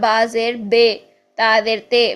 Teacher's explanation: تو اگر ہم زیر کی آواز کو مجہول پڑھتے ہیں تو وہ بن جائے گا با زیر بے، تا زیر تے، بی کو بے پڑھ دینا، تی کو تے پڑھ دینا، ٹھیک ہے؟